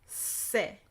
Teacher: And this is a regular hard S. No contact, no softening. Regular hard S.